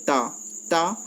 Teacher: आपकी जीभ है ये दांतों, ऊपर वाले जो दांत हैं उनसे टकराएगी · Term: दंत्य